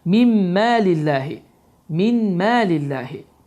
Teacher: Burada sükunun nundan sonra mim hərfi gəldi və bu zaman idam qaydası baş verir ki, nun oxunmur, sükunlu nun oxunmur. Mim hərfi isə şəddələnir və səs burundan çıxaraq idğam məlğunə qaydası baş verir.